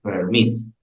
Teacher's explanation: dos sílabas y la fuerza de voz en mit